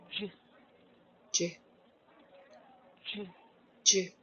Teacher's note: So the tongue, it bends in the middle. It's similar to your Sh.